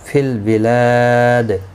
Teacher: وقف کی صورت میں دال ساکن پڑھا جائے گا، اس پر قلقلہ بھی ہوگا